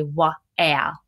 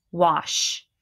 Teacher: the w actually controls the sound of the a and it sort of makes the a sound like an o